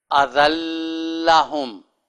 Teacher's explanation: غننے کی آواز کوئی نہیں کیونکہ آگے دوسرا حرف جو لام ہے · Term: غنہ نہیں ہوگا